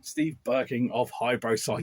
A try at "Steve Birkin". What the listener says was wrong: Not Birking. You actually said Birking. Yes, you did.